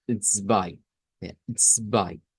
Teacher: no se pronuncia con una Z, sino que con una TS. Siempre que va al principio, la TS es porque hay una Z ahí.